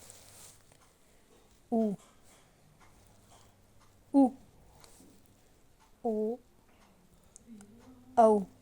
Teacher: वे स्वर जिनको बोलने में ओष्ठ की आकृति वृत्त की आकार में होता है या वृत्तमुखी हो जाता है, उन्हें वृत्ताकार या वृत्तमुखी कहा जाएगा।